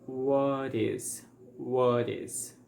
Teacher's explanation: the t is between two vowel sounds so it's going to sound like a flap te and it's going to sound like what is what is